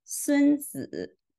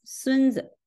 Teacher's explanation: In the second word, the second syllable is pronounced in the neutral way, and the word is pronounced as 孙子. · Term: neutral sound